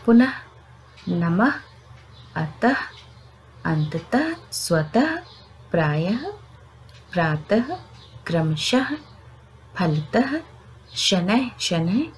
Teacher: तो ऐसे शब्द कुछ हैं जैसे पुनः, नमः, अतः, अंततः, स्वतः, प्रायः, प्रातः, क्रमशः, फलतः, शनैः शनैः इत्यादि। देखिए, हम अंत में हमने विसर्ग दिया है और उसका उच्चारण भी हम आधे ह की तरह कर रहे हैं